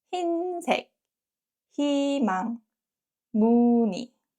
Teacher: when 의 is combined with another consonant, not 이응, is usually pronounced as 이